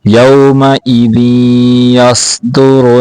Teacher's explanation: صاد کو موٹا کرنا ہے اور را کو بھی موٹا کر کے پڑھنا